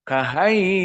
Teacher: Maka sau, waw sakinah sebelumnya fathah, madlin. Dan bertemu dengan hamzah dalam satu kalimat. Dibaca 6.